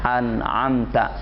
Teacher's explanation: Nun mati menghadapi ain dibaca izhar atau dibaca jelas suara nunnya tanpa ada dengungan